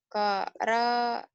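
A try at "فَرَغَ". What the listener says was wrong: Kok bukan koroa, ini ada titiknya semua. Titiknya ini, titiknya 1, bukan 2. Jadi fa, bukan ko. Farogo, ada titiknya ini. Kalau nggak ada titik bener farogo ya. Farogo, ada titiknya. Farogo yang ini.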